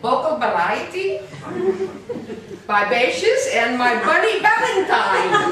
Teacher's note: for the Spanish there's an interesting phenomenon there that the V often times becomes the B VB so you get vocal variety by bases and my bunny